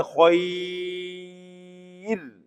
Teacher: گے باریک پڑھیں گے، اور وقت میں کیوں؟ اصول یہ ہے را اگر ساکن ہو اور اس سے پہلے یا ساکن آ جائے ہر حال میں را کو باریک پڑھتے